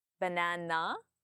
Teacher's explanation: So, my tone comes up at the end. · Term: rising intonation